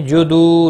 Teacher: واو مدہ ہے 1 الف کے برابر کھینچ کر پڑھیں گے